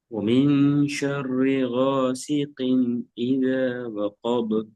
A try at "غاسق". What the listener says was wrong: غاسق குயின் என்ற sound வரணும். குயின். எஸ், கீ குயின். குயின் அந்த வித்தியாசம் மிகுது. சும்மா நாங்க கிண்ணன்னு சொன்னா எங்களோட வாயிட வடிவம் விரிவட்டதாக விரிவானதாக அமைக்கும். அது குயின் என்று சொல்ற இடத்துல கொஞ்சம் இந்த உயர்வான ஒரு குழிவு வடிவத்தை ஒரு ஒரு ஒரு அந்த உயர்வான ஓசைக்கு கொண்டு போகக்கூடிய அமைப்புல எங்களோட வாயிட வடிவம் சுருங்கியதாக மாறும். குயின் ஓசி குயின். அது சின்ன வித்தியாசம்.